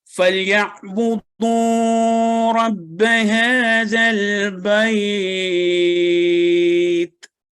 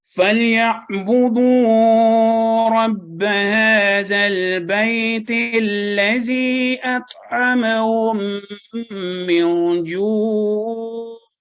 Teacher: ہم نے ملا کے پڑھا تو یہاں پہ بیت کو ہم نے لمبا نہیں کیا